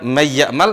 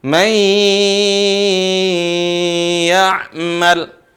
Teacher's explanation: Nun itu ada bekas di suara yang keluar dari hidung. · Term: suara dengung